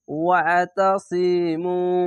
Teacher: পেশের পাশে অসাকিন এক আলিফ টেনে পড়বেন, আইনটিকে একটু মোটা করে গলা চিপে পড়বেন